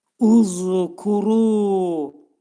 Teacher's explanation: Lezkuru, zəl hərfinin məxrəci, demək dediyimiz kimi, bundan qabaqda dedik ki, dil iki dişin arasına xəfiflə daxil olur. Pərtək z səsini deməyə çalışmaq lazımdır.